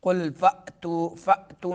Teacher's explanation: قل فأتو میں حمزہ کو جھٹکا دیں گے